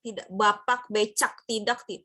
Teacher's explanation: tidak ada bunyi sentak begitu ya, tidak ada huruf K di belakang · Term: glotal